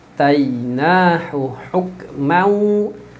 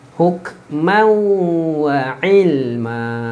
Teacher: Mau tanwin masuk ke dalam waw.